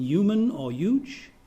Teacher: Or take the realization of the initial sound in words beginning with H, where the vowel U follows, as in human or huge. You can pronounce them using the palatal approximant y, as in human or huge. Or you can take the voiced palatal fricative y, as in human and huge.